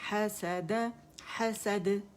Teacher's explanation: جبڑا کھلے گا یعنی حسد, اور اسے کھینچیں گے نہیں, مد نہیں بنائیں گے